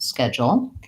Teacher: this is a word where the D U has a hidden J sound in it · the word has first syllable stress, so the ske is long and jol is short.